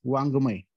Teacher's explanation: म्हणजे वेगवेगळे उच्चार आजपर्यंत आपण करून बघितले, पण त्याचा खरा उच्चार असा होतो की ह्याच वर्गातील म्हणजे कच्याच गटातील जो तिसरा वर्ण आहे कोणता, ग, तर तो गचा उच्चार आपल्याला नाकातून करायचा. त्या गचा उच्चार आपल्याला नाकातून करायचा · वाङ्मयातला जो ड सारखा दिसणारा व्यंजन आहे, तर तो अनुनासिक आहे, आणि तो नाकातील ग चा उच्चार आहे.